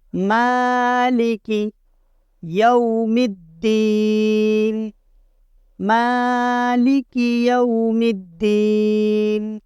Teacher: میم کے اوپر کھڑا زبر ہے، میم کو ہم ایک الف کے برابر کھینچ کر پڑھیں گے، اور یہ یا واو زبر یو کے اوپر ہم اپنے ہونٹ گول کریں گے۔